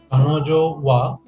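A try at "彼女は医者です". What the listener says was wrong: Yes, very good.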